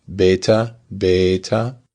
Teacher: The only difference is how long the a is. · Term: length of vowels